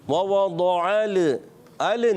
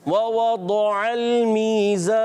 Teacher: لام ساکن ہے, لام کو ہلانا نہیں.